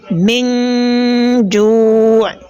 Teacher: That is another nasalization between nun sakin and the jim, and this type of nasalization is what is known as ikhfa'un haqiqi, because letter jim belongs to the ikhfa'un group, right?